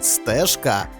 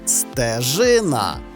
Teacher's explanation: можемо припуститися помилки передаючи їх на письмі наприклад у слові стежка є дзвінкий приголосний ж який під час вимови звучить невиразно майже подібно до своєї акустичної пари глухого звуку ш